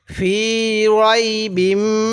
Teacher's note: মিমের উপর তাজদিদ আছে এজন্য আমি গুন্না করছি